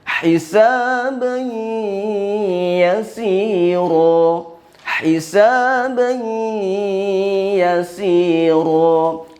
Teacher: Ketika huruf ya, nun, mim, waw, perhatikan ketika huruf ya sebelumnya itu tanwin, maka berlaku di situ idgham ma'al gunnah, ditekan kemudian ditahan.